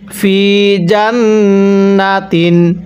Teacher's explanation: নুনের উপর তাজদিদ হলে গুন্নাহ করে পড়তে হয়